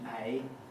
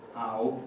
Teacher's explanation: the price and mouth diphthongs very differentiated with a very front starting point in a, and a very back one in ow